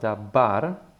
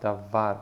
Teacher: the lips do not close. So therefore, the sound that you create is V · Okay, so the middle letter is V, and it's not pronounced dabar with a B, but with a soft V, davar, because there is no dagesh in it, or that dot in the center of the letter.